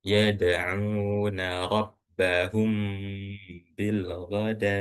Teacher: mim sukun. Kemudian setelahnya huruf ba maka dibacanya harus dengung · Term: Ikhfa syafawi